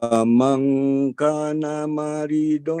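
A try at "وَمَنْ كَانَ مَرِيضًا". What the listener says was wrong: Kaknya panjangkan. Wamang kana maridon. wamang kana maridon.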